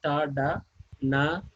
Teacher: produced by the tip of the tongue touching to the alveolar ridge